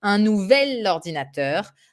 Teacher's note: Because if you say un nouveau ordinateur, we have this double vowel at the end of nouveau and at the beginning of ordinateur, and we do not do that in French. So we go for the L sound, un nouvel ordinateur.